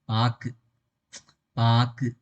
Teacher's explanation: பதிலாக ஒரு மாத்திரை அளவுக்கு இல்லாம வெறும் அரை மாத்திரையா குறைந்த அளவுக்கு ஒலிக்கும் இதுவே தனக்குரிய ஓசையிலிருந்து குறைந்து ஒலிக்கும் உகரம் குற்றியல் உகரம் ஆகும்